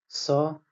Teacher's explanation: स यह भी आपका अघोष है